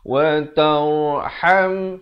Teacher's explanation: Ramai yang silap disebut watar hamna, bukan watar tetapi watar. Wa tarham, ha pedas di tengah kerongkong